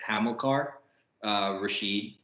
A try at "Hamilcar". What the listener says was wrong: It's Hamilcar. There's no R.